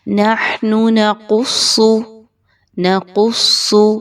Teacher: قاف اور صاد دونوں موٹے حروف ہیں کہ جو ہمیشہ موٹے پڑھے جاتے ہیں، ان کو باریک نہیں پڑھا جاتا۔